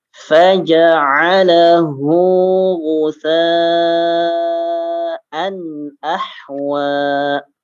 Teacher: Ghuthanya ini harusnya 4 atau 5 harokat ya